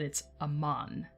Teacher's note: Man is the root, and therefore it is the part of the word that gets the emphasis. · Aman is the only word where the emphasis goes on the second syllable. It's a very rare exception.